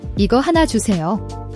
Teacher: The SE is a soft S sound, not a SH.